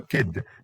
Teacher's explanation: D as in kid. So this is voiced alveolar stop.